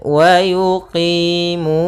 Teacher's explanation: pada lafal qi itu ada kasrah bertemu ya, yaitu mad tabi'i. Mu ada dhammah bertemu waw, yaitu kedua-duanya kita namakan dengan mad tabi'i.